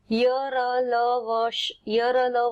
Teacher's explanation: जिह्वा जो है हमारी ये पूरी तरह से स्पर्श नहीं करती, केवल थोड़ा सा रगड़ खाती है। स्पर्श करते समय थोड़ा सा स्थान शेष रह जाता है, अतः ये स्वर तथा व्यंजन दोनों के बीच का वर्ण है। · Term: अंतःस्थ